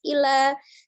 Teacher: hati-hati lam tasdid lunak saja, ya, tidak terlalu dilepas. Illa, tidak juga illa, tidak berlebihan penekanannya, dia sifatnya lunak saja.